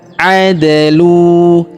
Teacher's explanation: Perhatikan huruf da berharakat sukun maka kita pantulkan atau kita qalqalahkan.